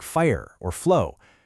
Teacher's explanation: Your teeth and lips don't fully close. Instead, you push continuous air flow through a narrow space. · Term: fricative